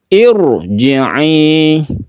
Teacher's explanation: akan tetapi khusus ro, meskipun didahului kasroh, yang kasroh itu disebabkan karena hamzah wasol, maka ro-nya ini menjadi tebal. · Bibirnya dia mencucukkan irji'i, ditebalkan ro-nya ya, sama dengan kita membaca rabbiki ro, ini tebal. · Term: tafkhim